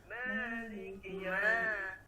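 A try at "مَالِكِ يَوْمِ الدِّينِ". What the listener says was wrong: Bukan bukan ma, lembut dia.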